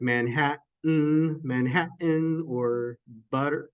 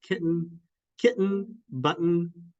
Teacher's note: a glottal stop is in the middle of words like Manhattan